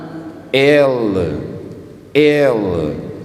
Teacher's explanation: Parece que a língua sobe e vai fazer contato com os alvéolos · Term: alveolar